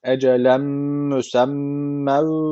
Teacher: tenvinden sonra mim gelmiş. İdğam meal gune var. Guneli bir şekilde bağlıyoruz. Ecelem müsemmev ve bakın şeddeli mim var.